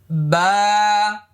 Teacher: বাবা লক্ষ্য করুন। বা এক আলিফ পরিমাণ লম্বা হবে। মুখটা খালি ফাঁকা হবে।